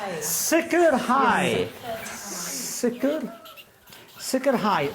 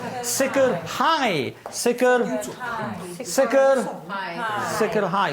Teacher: here the accent is actually in the last part of the word